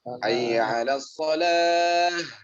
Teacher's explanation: Ta marbutoh ketika diwakafkan dia berbunyi ha. Makanya tebal dari aqsal halaq.